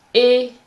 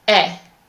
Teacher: If you remember, the difference between these 2 sounds is that the first one, E, is small, and the second one, E, is more opened